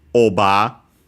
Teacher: the sound r doesn't exist in Japanese so it becomes the closest vowel ah and also usually long similar to uh English uh varieties that don't have the sound